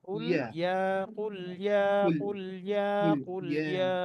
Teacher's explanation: কুলে ছুটে যাবে না, কুল তারপর হচ্ছে ইয়া, ইয়া আসবে জিহ্বার মাঝখান থেকে।